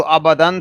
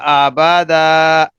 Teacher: اب جو تنوین ختم ہو جائے گی اور اس کے بدلے میں الف آ جائے گا، تو آبادن تھا، جب ہم وقف کیا تو بن جائے گا آبادا۔